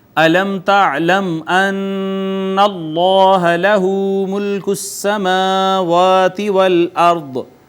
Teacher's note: را ساکن ماقبل مفتوح، را کو مفخم پڑھا جائے گا